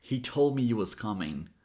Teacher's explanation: See how I said the H in the first word, but I didn't say the H in the second word?